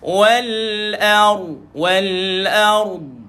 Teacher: Kalau huruf sebelumnya baris di atas, maka ra ini dibaca dengan sifat dia, hukum dia yang ditebalkan tuan-tuan, dimuncungkan sedikit bunyi. Maka manakala tuan-tuan wal ar dengan hamzah ni tuan-tuan jangan ditebalkan sangat.